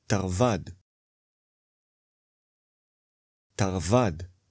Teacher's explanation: The last syllable is stressed.